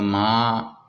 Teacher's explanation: اکثر جو اس میں غلطی ہو جاتی ہے وہ ہوتی ہے میم کھڑی زبر ماں، تو اب یہ دیکھو ماں ہو رہا ہے تو ناک میں آواز جا رہی ہے، یہ درست نہیں ہے، اور اکثر قرآن پاک پڑھتے ہوئے بھی جو ہے وہ یہ غلطی عام طور پہ ہو جاتی ہے، اس کی طرف ذہن ہی نہیں رہتا۔